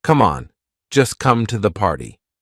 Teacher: we drop that t we do not pronounce it so just sounds like just right just an S I'm just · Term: silent T